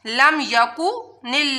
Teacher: यहाँ पर ज़ी को एक अलिफ के बराबर खींच कर पढ़ा जाएगा।